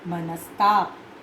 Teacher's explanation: मनः जमा ताप, विसर्ग के बाद त है तो दंत्य स, विसर्ग का दंत्य स में परिवर्तन, मनः जमा ताप, मनस्ताप।